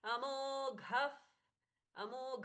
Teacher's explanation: घ अच्छे से महाप्राण है ग घणेश जी वाला घला अमो घफ फ जैसा प्रच्छवास हुआ